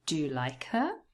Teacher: So do and like are naturally stressed if it is a question.